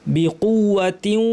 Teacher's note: বিকুওয়াতিন, ওয়া, তিন ওয়াকে আমরা কীভাবে পড়ি, তিউয়া, তিন ওয়া আসলে তিউ কী করলাম, তাসদিদ দিয়ে পড়লাম, যদিও এখানে তাসদিদ দেওয়া নাই, লেখার রীতিতে দেওয়া নাই এইখানে, কিন্তু তাসদিদ দিয়ে পড়ব। তাসদিদের প্রথম অংশে নাক থেকে গুন্না হবে। বিকুওয়াতিউ, ওয়া বলার সময় গুন্না শেষ।